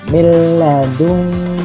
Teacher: nun sukun bertemu dengan lam, tidak boleh dibaca mendengung, maka tidak dibolehkan membaca miladunka dengan mendengungkan nun, maka itu salah. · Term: idgham bila gunnah